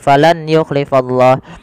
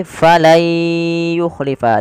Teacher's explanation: Maka cara membacanya bukan lagi falan yukhlifallah, tapi menjadi falai yukhlifa. Diganti suara nunnya menjadi suara ya. Kemudian langkah kedua ditahan dengan gunnah. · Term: idgham